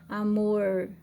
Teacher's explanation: Então, a sua língua meio que flexiona. A ponta da língua vai tocar lá no meio do céu da boca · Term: R retroflexo